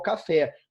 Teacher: a força na última sílaba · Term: oxítona